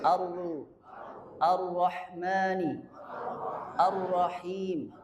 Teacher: jadi dia harus getar tidak boleh syidah